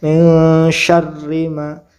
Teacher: Ini dibaca ikhfa atau samar, bacanya samar ya, antara nun dan huruf ikhfanya samar di tengah-tengah sehingga mirip seperti eng ya